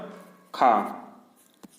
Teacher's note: स्पर्श व्यंजन कंठ ध्वनि, अघोष और महाप्राण ध्वनि हैं।